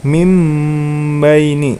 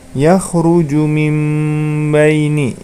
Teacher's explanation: Maka cara membacanya nun sukunnya diganti menjadi mim sukun, ya. Mim baini, ya, sambil didengungkan. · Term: iqlab